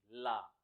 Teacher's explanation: जब आप ला का उच्चारण करोगे तो जीभ क्या होगी? आगे से ऊपर लग जाएगी, जुड़ जाएगी, और हवा कहाँ से निकलेगी? जीभ के पीछे के हिस्सों से निकलेगी · पार्श्विक व्यंजन बोलते हैं। इसमें जीभ आगे से जुड़ जाती है और हवा कहाँ से निकलती है? जीभ के पीछे से निकलती है